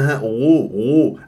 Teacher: لان الغين والخاء من مخرج واحد ادنى الحلق لكن الخاء يجري فيها الصوت والنفس فلا بد ان تنتبه صوت فقط في الغين